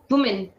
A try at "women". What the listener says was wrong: Women. We don't say who, we say we, women. Women is the correct.